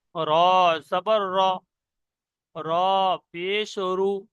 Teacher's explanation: মুখটা গোল করে আওয়াজটা একটু মোটা মতন হবে। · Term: পুর